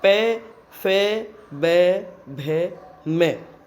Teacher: ओष्ठ्य व्यंजनों के उच्चारण में मुख विवर में आने वाली सांस ओठों से बाधित होती है और स्फोट के साथ बाहर निकलती है, मतलब एकदम विस्फोट जैसी ध्वनि होती है और ध्वनि बाहर निकलती है।